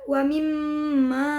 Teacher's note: terdapat hukum bacaan gunah yaitu pada mim bertasdid cara membacanya adalah didengungkan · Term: gunnah